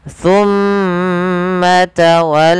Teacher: Idgham mimi adalah bacaan terjadi ketika mim mati bertemu dengan mim. Cara membacanya, masukkan mim yang pertama kepada mim yang kedua dan ditahan suara mimnya.